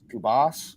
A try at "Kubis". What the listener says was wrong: It is pronounced Kubis, so it's the it's at the end, not us.